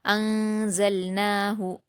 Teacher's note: نون ساکن کے بعد زا آیا ہے، اس لیے یہاں پر اخفا کا قاعدہ ہوگا، تو نون ساکن کی آواز کو ناک میں چھپا کر غنہ کے ساتھ پڑھیں گے۔ انزلناہ، زا پر حرکت ہے، لام پر جزم ہے، تو زا کو لام سے ملا دیں گے بلا قلقلہ کیے، اور نون پر کھڑا زبر ہے تو 2 حرکات کھینچ کر پڑھیں گے، اور ہا پر حرکت ہے تو جلد پڑھیں گے۔